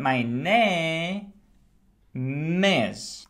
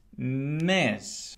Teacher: I want you to feel that m as the beginning of is